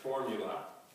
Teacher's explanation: formula has stress on the first syllable, 3 syllables, formula. And it's a noun, and it has 3 meanings.